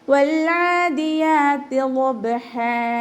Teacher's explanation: വാവ് ഉച്ചരിക്കുമ്പോൾ ചുണ്ടുകളൊന്ന് സർക്കിൾ ചെയ്ത് കൊടുക്കുക, പല്ല് ചുണ്ടിൽ തട്ടാത്ത രൂപത്തിൽ. ലാമിനെ നമ്മൾ ഹാഫ് സുക്കൂന് കൊടുക്കുക കേട്ടോ, കൽക്കലയുടെ ലെറ്റർ അല്ലല്ലോ, അപ്പോൾ ഹാഫ് സുക്കൂന് കൊടുക്കുക.